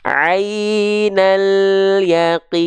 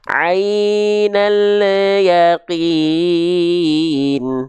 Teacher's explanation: pastikan ketika teman-teman melafalkan lam sukun itu suaranya tidak memantul tapi harus ngalir sedikit, gak boleh putus